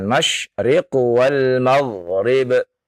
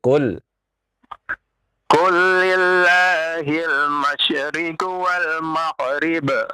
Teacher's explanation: shin dan ghain ya. Itu tidak diqalqalahkan ya Pak ya. Jangan diqalqalahkan.